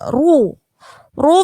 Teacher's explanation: karena dia roknya harokatnya dummah maka dibaca tebal.